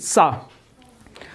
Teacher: जीभ जो है उसको हम दांत में टच करेंगे और हवा बाहर करेंगे